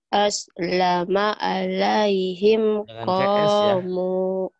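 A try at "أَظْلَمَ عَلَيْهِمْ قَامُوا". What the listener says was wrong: Jangan ke S. Zo.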